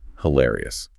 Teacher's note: Your eyebrows naturally lift. You have to put physical breath support and energy into the hill syllable.